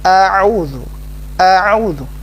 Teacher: Yang pertama adalah hamzah a biasa, yang kedua adalah huruf ain, au. A'udzu.